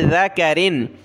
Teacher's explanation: ذال پر زبان نکالیں، کاف کو باریک پڑھنا ہے